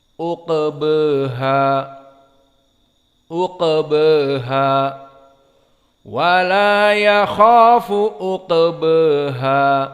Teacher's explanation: Adapun qiraah dari Warsh dan diikuti atau bersamaan dengan Abu Amr, maka dibaca dengan taklil.